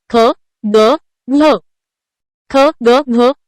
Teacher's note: ख ग घ हे वर्ण कंठातून उच्चारले जातात म्हणून ते कंठवर्ण आहेत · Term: कंठ्य वर्ण